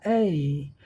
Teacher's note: देखो ए wide mouth, ए में आपका माउथ जो है वाइड होगा, यहाँ ए में। बैक ऑफ टंग डाउन, ए जिह्वा का पिछला भाग डाउन रहेगा